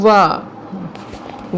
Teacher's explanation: तो उसमें क्या आता है, वाह जो होता है किसके द्वारा बोला जाता है दोस्तों, वो बोला जाता है दंत ओष्ठ के द्वारा, दंत और ओष्ठ के द्वारा बोला जाता है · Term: दंतोष्ठ व्यंजन